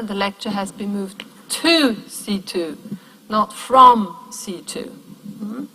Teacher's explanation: Where we put an emphasis on this directionality, and then we would stress the prepositions. And then these prepositions would be pronounced in their strong form.